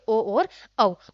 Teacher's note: और कंठोष्ठ्य, कंठ और आपके ओष्ठ, होठ, कंठ से और होठ से जो स्वर बोले जाते हैं वो कौन से आपके कंठोष्ठ स्वर कहलाते हैं, आपके ओ और औ।